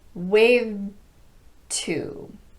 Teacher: So you mainly hear the T, waved to. I'm positioning for the D, and I'm keeping my voice on momentarily, and then I'm releasing in a T sound